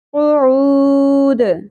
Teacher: قوف کو پر ادا کرنا ہے اور لہات یعنی نرم تالو سے. عین وسط حلق سے باریک آواز کے ساتھ، اور واو حرف مدہ ہے ایک الف کے برابر کھینچنا ہے.